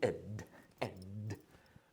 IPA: ɪd